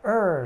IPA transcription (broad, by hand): ər